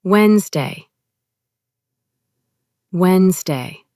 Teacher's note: The nez disappears completely. Just glide over it in a sentence.